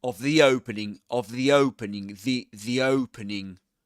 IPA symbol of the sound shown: ði